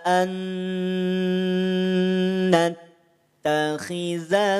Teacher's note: kalau ada nun sukun bertemu dengan huruf nun, maka rumusnya tahan 2 harokat. Idgham bi gunnah dibaca dengung.